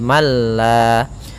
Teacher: Kamil yaitu Apabila ada nun mati bertemu dengan lam maka suara nunnya hilang mengganti menjadi suara lam yang mana nunnya masuk kepada lam